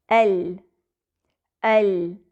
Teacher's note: लाम का मखर जबान के अगले किनारे और नोक और उसके मदे मुकाबिल ऊपर के आठ दांतों के मसूड़े हैं · لام کا مخرج زبان کے اگلے کنارے سے زبان کی نوک تک اور اس کے مد مقابل اوپر کے 8 دانتوں کے مسوڑے ہیں۔ لام کو ہم کہہ سکتے ہیں کہ وہ حافۃ اللسان سے بھی ادا ہوتا ہے اور طرف اللسان سے بھی، یعنی زبان کی نوک سے بھی۔ · زبان کے اگلے کنارے اور زبان کی ٹپ اس میں استعمال ہو رہی ہے